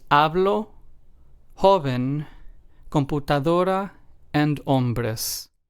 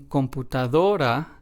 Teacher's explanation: then in computadora we stress the second to last syllable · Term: word stress